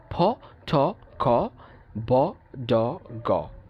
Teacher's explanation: সো সাউন্ডটা কী হচ্ছে, প্রথমে একটা বাধাগ্রস্ত হচ্ছে, ঠিক আছে? সাউন্ড না, বায়ুপ্রবাহটা কী হচ্ছে, বাধাগ্রস্ত হয়ে তারপরে আবার কী হচ্ছে, রিলিজ হচ্ছে, ঠিক আছে? অর্থাৎ একটা মুখের কঠোরতার মাধ্যমে কী হচ্ছে, এইটা আটকে যাচ্ছে, তারপর আবার রিলিজ হচ্ছে। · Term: প্লোসিভ সাউন্ডস